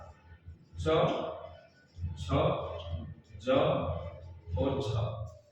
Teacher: अब 20 में से जो चा वाली लाइन की जो 4 वर्ण हैं, इनके उच्चारण में का खा वाली जो लाइन है इससे सामान्य वर्णों से अधिक उच्चारण में समय लगाना पड़ता है, यानी घर्षण अधिक होता है, संघर्ष अधिक होता है। इसीलिए इन वर्णों को स्पर्श संघर्षी, स्पर्श संघर्षी कहा जाता है।